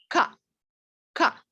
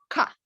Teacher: the sound is guttural, right? So it's coming from the throat.